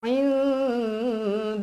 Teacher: Lafaz Allah dekat sini mestilah dibaca dengan tebal. Sebab apa? Sebab sebelumnya huruf baris atas. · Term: Lafzul jalalah